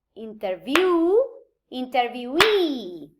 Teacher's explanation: the main stress of the word moves to the location of the suffix